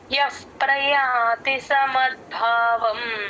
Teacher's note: ఇక్కడ య పక్కన ఉన్న విసర్గ ఎఫ్ సౌండ్ అవుతుంది ప ముందు ఎప్పుడు విసర్గ వచ్చిన ఎఫ్ లాగా పలుకుతాం ఎఫ్ ప్రయాతి ప · ముంద ఎఫ్ కి ప ని జాయిన్ చేసే చెప్పాలి ఎఫ్ ప్రయాతి సమద్భావం మద్భావం భ కి మహాప్రాణం ఉంది గమనించండి